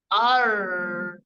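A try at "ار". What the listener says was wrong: Jangan ditekuk ya, jangan ar. Ini ditekuk ke belakang nggak ujung lidahnya? Jadi tetap ke depan ya. Ujung lidahnya tetap ke depan. Nempelnya di mana? Di gusi ya. Punggung ujung lidahnya tetap nempel di gusi. Sama seperti ketika diharokati. Ro. Nah, itu kan di gusi ya nempelnya. Nah, sama ar.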